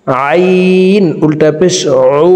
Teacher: আইন হরফের উচ্চারণ হলকের মধ্যখান থেকে চাপ দিয়ে পড়তে হবে, কারণ আইনের মখরাজ হলকের মধ্যখান থেকে হবে।